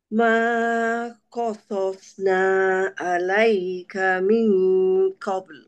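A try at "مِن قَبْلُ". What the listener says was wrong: Okey. Bunyikan lam juga. Minqabl.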